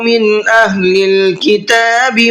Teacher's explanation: من نون کو ظاہر کر کے پڑھنا ہے، اس لیے کہ نون ساکن کے بعد میں حمزہ ہے جو اظہار کے حرفوں میں سے ہے۔